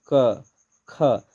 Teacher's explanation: जोन वर्ण कर उच्चारण में कंपन नी बुझाएल उके का कहल जाएला, अघोष कहल जाएला।